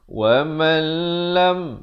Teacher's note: Di sini idgham bila gunnah. Asalnya waman. Tapi bila datang lam jadi wamal. Idgham bila gunnah.